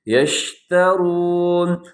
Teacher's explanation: شین کی آواز میں تفشی ہوتی ہے، آواز کو پھیلانا ہوتا ہے